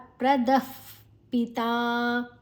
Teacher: ವಿಸರ್ಗದ ಉಚ್ಚಾರಣೆ ಫ್, ಮುಂದಿನ ಅಕ್ಷರ ಪಿ. ಅದು ಉಚ್ಚಾರಣೆ ಅಲ್ಲ, ಗಾಳಿಯನ್ನು ನಮ್ಮ ಹಲ್ಲಿನ ಎಡೆಯಲ್ಲಿ ಹೊರಗೆ ಬಿಡುವಂಥ ಶಬ್ದ. ಪ್ರದಃ ಪಿತಾ ಪಿತಾ ದೀರ್ಘ.